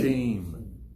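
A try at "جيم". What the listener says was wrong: You have to squeeze this. You see the tongue here? There is no gap. Squeeze it in a hard part on the top. Don't leave like a jim. Jim, there is a sound is going between. There is a gap. No, squeeze it.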